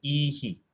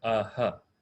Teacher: the Visarga, that sound, just mirrors the vowel before it